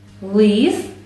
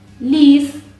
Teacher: перший звук став м'яким